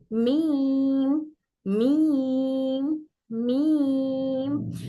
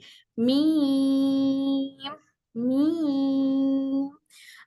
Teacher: मीम पढ़ते वक्त में मीम की आवाज हमारे नाक में भी नाक से भी आती है मीम का रोल नाक से भी अदा होता है मी रा